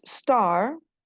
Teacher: star, star itu tidak ada peletupannya.